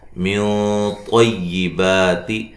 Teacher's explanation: قاف کو موٹا ادا کریں گے، واو مدہ ہے، من طیبات، نون ساکن کا اخفا ہے موٹا، طا کو موٹا ادا کریں گے ، با مد اصلی ہے، ما مد اصلی ہے، کیسب، با